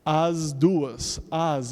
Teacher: you pronounce that S like a Z because the D is voiced.